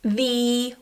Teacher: the strong form of this word is the with a long e Smiley e sound